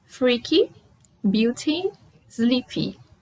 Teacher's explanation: Nós pronunciamos esse Y com som de I. Um I um pouquinho longo.